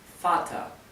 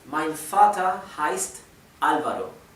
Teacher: en Vater, la ER se pronuncia más bien como una A y una R casi imperceptible. Así que Vater podría pronunciarse F-A-T-A-R, o como la R es casi imperceptible, podría pronunciarse F-A-T-A, Vater.